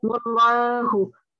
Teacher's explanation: And because the lam or jalala, because the lam is in Allah, it's the Allah's attribute, the name of Allah, the name is followed by a fatha. And when that is the case, we pronounce it with a full mouth.